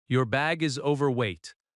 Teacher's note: The stress falls on over overweight.